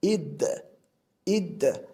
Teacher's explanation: Yoki id, id, bu yerda alif harfi kasra bilan kelganligi uchun i deb o'qiyapmiz, ammo dal harfi sukun bilan kelganligi uchun hech qanday unli bermasdan id holatida o'qiyapmiz.